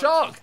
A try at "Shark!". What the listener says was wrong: You said that so tame.